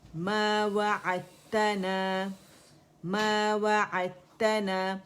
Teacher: دال کا ادغام ہو جاتا ہے کمپلیٹلی تا کے اندر